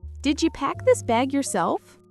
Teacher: Did you becomes did ya.